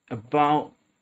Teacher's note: You have to create the tension in your throat for the glottal T